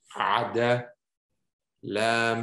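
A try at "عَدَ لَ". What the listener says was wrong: Okay, good. Next.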